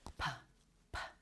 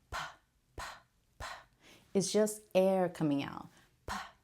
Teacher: you put your hand right here you're going to notice that your vocal cords are not going to vibrate when you make that sound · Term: voiceless sound